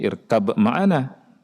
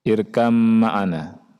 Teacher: bacanya bukan irkab ma'ana, tapi irkam ma'ana. Itu ada tasydid di mana? Di mim